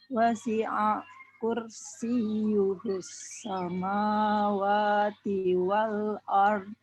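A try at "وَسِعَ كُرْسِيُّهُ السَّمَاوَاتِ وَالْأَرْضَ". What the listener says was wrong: Oke, disambungkan wasi'anya, jangan berhenti. Wasi'a kursiyuhus.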